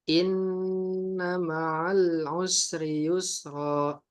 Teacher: tidak perlu terburu-buru memang dalam melafalkan gunnah ini. Karena gunnah memang sifatnya adalah ditahan. Oke, maka tahanlah untuk sesaat, baru kemudian kita baca yang harokat fathahnya.